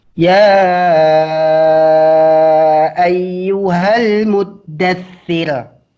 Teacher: Ini tipis. Karena ra sebelumnya kasrah, berarti tipis.